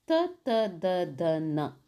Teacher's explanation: ತ ವರ್ಗ ಹಲ್ಲುಗಳ ಬಳಿ ಹುಟ್ಟುವುದರಿಂದ ಇದನ್ನ ದಂತ್ಯ ಅಕ್ಷರ